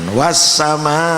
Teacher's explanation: Ini dibaca panjang karena ada mat bertemu hamzah dalam satu kalimah. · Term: mat wajib muttasil